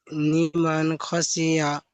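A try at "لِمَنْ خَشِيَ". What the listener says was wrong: আচ্ছা, নি পড়ছে, নি নয়, লি, লিমান খসিয়া।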